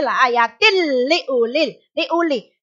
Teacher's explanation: Tanwin dilebur dan huruf lam dibaca tasdid. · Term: idgham bila gunnah